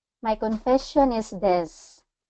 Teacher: So it kind of has that downward curve to it.